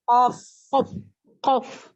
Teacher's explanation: Jadi paling dekat dengan tenggorokan, pangkal lidah ya, yang paling dekat dengan tenggorokan berarti qaf.